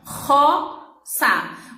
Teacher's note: O R é forte porque vem lá da garganta, mas como inicia a palavra, é um R só. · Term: R forte